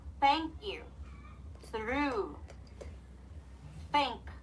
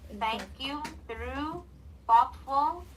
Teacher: tongue should be in between your upper and lower teeth and say like a hissing sound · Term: unvoiced th